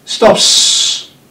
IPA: stops